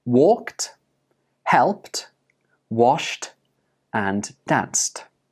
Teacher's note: even though these words are spelled with an ed they are pronounced with a ta sound